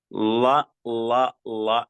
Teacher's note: നാവിന്റെ തല പുറത്തുണ്ടാകും, മേലെ പല്ലിനോട് പൊട്ടിച്ചു വെച്ചിട്ട് ള എന്ന് പറയും.